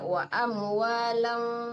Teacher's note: Jadi disamarkan ke fa ya, wa amwalang. Didengungkan di situ. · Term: ikhfa hakiki